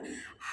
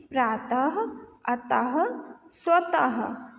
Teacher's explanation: इनको जब हम पढ़ते हैं तो लास्ट में हल्का सा हा का साउंड आता है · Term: विसर्ग